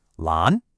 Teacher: Lan again, make your pitch go up like you're asking a question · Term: rising second tone